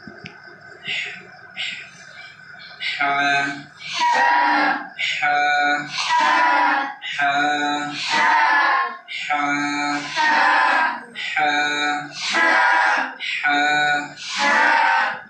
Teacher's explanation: হার মাখরাজ আছে হলকের মধ্যখানে।